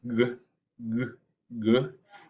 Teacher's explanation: It is velar and plosive. And you make velar consonants or velar sounds when you raise the back of your tongue to the velum block or restrict the airflow. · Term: G sound